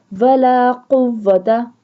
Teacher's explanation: ولا قوت، قاف دو نقطے والے کاف کو ہمیشہ پر پڑھا جاتا ہے یعنی موٹا پڑھا جاتا ہے، زبان کی جڑ اور تالو کے نرم حصے سے ادا کیا جاتا ہے